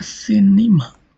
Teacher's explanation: the stress moves to one syllable before the penultimate syllable and falls the stress on the antepenultimate syllable